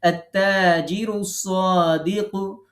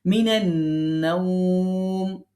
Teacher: দেখেন আলিফ লাম দুইটাই বাদ দিচ্ছি। তার মানে হচ্ছে হরফে শামসি যদি এটা অন্য কোনো শব্দের সঙ্গে যুক্ত হয় তখন হরফে শামসির আলিফ লাম দুইটাই বাদ যাবে, আর স্বাভাবিক অবস্থায় শুধু লাম বাদ যাবে।